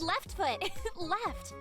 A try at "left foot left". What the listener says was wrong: No, the way that you said it changed the meaning. It's left foot left, not left foot left. Like, you don't emphasize that it's a left foot, you emphasize that the left foot goes left.